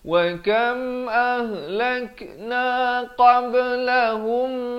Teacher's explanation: idgham mislain saghir, mim bertemu mim kena dengung dua harakat